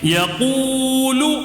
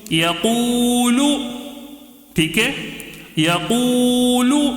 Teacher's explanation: قو میں کھینچ رہا ہوں میں. کیوں کھینچ رہا ہوں، واو مد ہونے کی وجہ سے. یا زبریہ، قاف واو پیش قو، یقو، لام پیش لو، یقول.